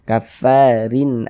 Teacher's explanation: dua di bawah huruf kasratain atau kasrah tanwin atau tanwin kasrah maka huruf ro dibaca tarqik Dibaca tipis-tipiskan huruf rnya